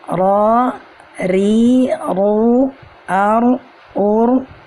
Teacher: pada huruf ra makhrajnya adalah ujung lidah dan sedikit punggung lidah yang menyentuh ujung langit-langit